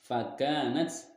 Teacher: Fakanat, ini ada mad asli atau mad tabi'i karena huruf kaf berharokat fathah dan setelahnya tidak bertemu dengan huruf hamzah, maka cara bacanya dipanjangkan dua harokat huruf kafnya